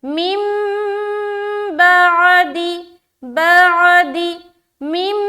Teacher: हम नून को मीम से बदल देंगे, ये छोटी सी मीम से। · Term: इक़लाब का कायदा